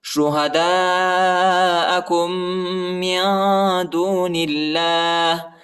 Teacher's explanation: کاف کو جو ہے میم کے ساتھ ملانا ہے، دوسرے میم کے ساتھ ملانا ہے، کیونکہ میم پر شد آیا ہے اور یہ میم نہیں پڑھا جاتا ہے، ادھر غنہ بھی کرنا ہے، ٹھیک ہے. شہداءکم من دون اللہ ادھر جو ہے اللہ کے نام کو اب جو ہے موٹا نہیں پڑھنا ہے، ٹھیک ہے، باریک پڑھنا ہے، کیونکہ ادھر زیر آیا ہے، نون پر زیر آیا ہے.